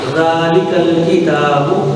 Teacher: ذال کو زبان کو اوپر والے دانتوں کے کنارے کے ساتھ لگاتے ہیں